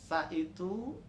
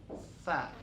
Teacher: Sa itu adanya di ujung lidah dengan ujung gigi.